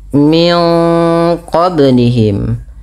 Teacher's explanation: tahan bunyi suara min qa-nya karena pada lafal ini ada bacaan ikhfa. Ikhfa adalah membaca antara izhar dan idgham.